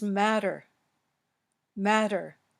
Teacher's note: it was the flapped T it's between two vowels with the stress before it